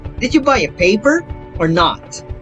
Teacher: first having question intonation and the second statement intonation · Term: alternative question